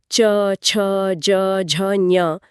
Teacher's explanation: जीभ के बीच वाले हिस्से को जब हम तालू पर लगाते हैं तो च वर्ग बनता है। च, छ, ज, झ, ञ ये तालव्य ध्वनियां हैं।